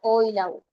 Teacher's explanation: Los posteriores, por el desplazamiento de la lengua, era la O y la U